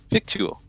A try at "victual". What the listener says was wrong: According to this, it's pronounced Vittle. The C is silent.